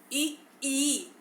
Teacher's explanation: ई का उच्चारण करते समय जो मुख से जो वायु निकलती है वह तालु स्थान पर टकरा के निकलती है, तो अर्थात इसे हम तालव्य ध्वनि कहते हैं।